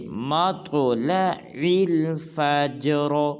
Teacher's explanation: جیم کو قلقلہ کریں گے اور آخر میں را کو پر ادا کریں گے، جیسے مطلع الفجر۔